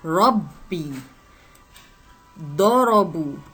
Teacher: untuk ra di kedua-duanya berbunyi tebal. Okey, kita sebut dengan tebal. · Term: ra dibaca tebal